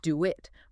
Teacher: do it often gets a little w sound linking the vowels